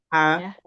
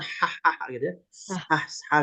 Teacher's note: H tipis itu dia tempatnya di tengah tenggorokan, seperti orang yang tadi buang napas